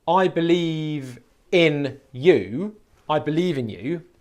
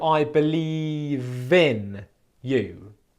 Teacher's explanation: the V sound has just moved to the front of the next word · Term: linking speech